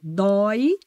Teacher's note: a diferença do som tá aqui ó doi tem vogal aberta